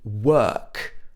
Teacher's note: in the british accent it would be work uh a very long single vowel sound